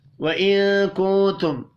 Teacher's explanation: نون ساکن کے بعد کاف ہے، اخفاء حقیقی ہوگا